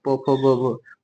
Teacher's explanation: ओष्ठ ध्वनि कौन होता है जिसमें होठ हमारे आपस में सटते हैं और इसके अंतर्गत प वर्ग आता है।